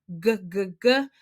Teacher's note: with the G, it's also a voice sound, so you'll feel it. You feel that vibration in your throat.